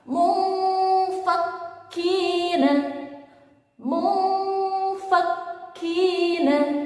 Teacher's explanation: Jika nun sukun bertemu dengan fa pun dibaca dengan samar-samar.